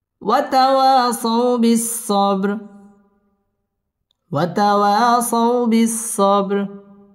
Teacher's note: সাউ বিস-সাব বা কলকলার হরফ ধাক্কা দিয়ে পড়তে হবে ওয়াতাওয়াসাউ বিস-সাবর র পুর হবে এবং এখানে ওয়াকফ করতে হবে